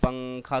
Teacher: تنوین یا نون ساکن کے بعد حروف اخفاء آوے تو، یعنی ان 15 حرفوں میں سے کوئی سا حرف آوے تو نون کی آواز کو ناک میں چھپا کر پڑھنا چاہیے